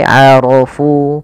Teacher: karena dia berharakat fathah maka dia tebal